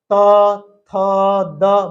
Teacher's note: ये जो त वर्ग के अक्षर हैं ये दांत से बोले जाते हैं हमारी जीव दांत में टच करती है त थ द बोल